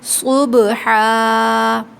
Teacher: مغیراتی صاد میں سیٹی کی آواز آتی ہے، سیٹی کی صفت ہے صاد میں، تو صبحا، لیکن ایک ہوتا ہے صبحا بالکل سین کی، صاد میں سیٹی کی آواز آئے گی لیکن اس کو موٹا پڑھیں گے، صبحا، ٹھیک ہے۔